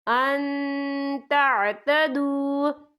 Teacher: نون ساکن کی آواز کو ناک میں چھپائیں گے